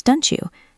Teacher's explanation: When a T meets a Y, they combine to make a ch sound, like cheese. So don't you becomes don't you.